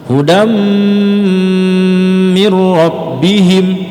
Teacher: Dam itu tanwin ya, bertemu dengan huruf mim maka idgham bi gunnah.